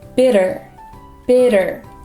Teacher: when we make the flap te sound you want to lightly tap the roof of your mouth